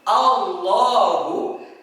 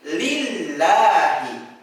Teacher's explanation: Ada yang dibaca tebal seperti Allahu , ada yang dibaca tipis seperti lillahi.